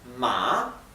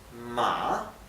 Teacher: la A baja y sube la pronunciación